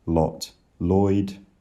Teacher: Oy starts with the vowel of lot